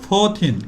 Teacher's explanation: উপরের দাঁত নিচের ঠোঁট আপার টিথ লোয়ার লিপ উচ্চারণ করবো একটু বাতাস বের করে